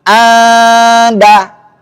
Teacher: Ikhfanya 2 harakat dan tipis.